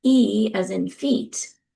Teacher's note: E as in feet is a pure vowel. It's one articulation of a sound.